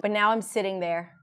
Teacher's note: 'there' was completely reduced. 'now' it's stressed, so it's clear